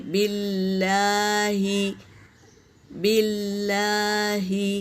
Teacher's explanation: یہ خیال رہے کہ یہ اللہ کے نام سے پہلے زیر ہے تو یہ باریک پڑھا جائے گا اللہ کا نام